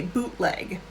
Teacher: because i'm american we'd say bootleg because we don't like the t sound in the middle of words